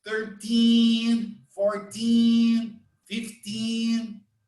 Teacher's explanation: in this case the intonation is in the second syllable